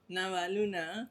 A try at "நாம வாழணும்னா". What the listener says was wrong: நாம அந்த நாமங்கிறது வாயிலே வர மாட்டேதா உங்களுக்கு